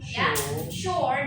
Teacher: Di situ ada long vowel dan juga konsonan R-nya tidak kentara ya.